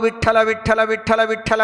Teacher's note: ಮಹಾಪ್ರಾಣದ ಠಕಾರವನ್ನು ಗಟ್ಟಿಯಾಗಿ ಉಚ್ಚಾರಣೆ ಮಾಡುವಂತಹ ವಾರಕರಿ ಸಂಪ್ರದಾಯದ ಜನ ಇದ್ದಾರೆ